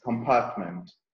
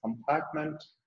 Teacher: in the US pronunciation, the R sound is being pronounced, but UK pronunciation is not being pronounced